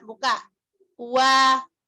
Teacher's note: Monyongnya jangan sempurna, jangan itu seperti domah. Wa, monyong tapi jangan nutup.